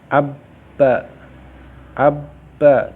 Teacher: suara ba itu keluar dari kedua bibir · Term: huruf ba